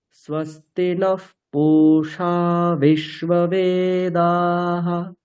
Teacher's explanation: এখানে খেয়াল রাখবেন বেদা ওটা দুটোই দীর্ঘ।